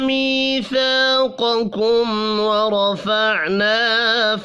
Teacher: میم ساکن کے بعد واو ہے، اظہار شفی ہوگا، یہاں بھی غنہ نہیں ہوگا